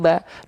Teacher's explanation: Ba fathah bunyinya bukan bo tapi ba.